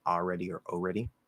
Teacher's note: you can also drop the l part